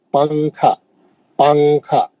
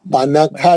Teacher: نون کی آواز کو ناک میں سوئچ کر دیں گے اور اس کو چھپائیں گے، چھپا کے غنہ کریں گے. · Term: اخفا